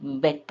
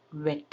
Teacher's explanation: ಇಲ್ಲಿ VET ಇದ್ರೆ ಮೇಲಿನ ಹಲ್ಲು ಕೆಳ ತುಟಿಯನ್ನು ಲೈಟಾಗಿ ಟಚ್ ಮಾಡಿಕೊಂಡು ಹೇಳಬೇಕು, ವೆಟ್ ಅಂತ. WETಗೆ ತುಟಿ ರೌಂಡ್ ಮಾಡಿಕೊಂಡು ವೆಟ್ ಅನ್ಬೇಕು.